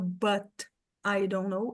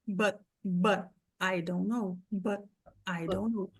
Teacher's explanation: Eu posso soltar o T, ou eu posso fazer um stop T aqui, que é quando eu engulo esse T.